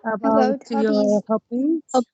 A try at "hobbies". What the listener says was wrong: Hobbies, not hobbies. Hobbies. It's about hobbies. Hobbies. ما في داعي للتشديد أبدا.